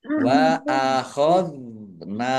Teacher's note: dal sukun bukan kolkolah jangan dipantulkan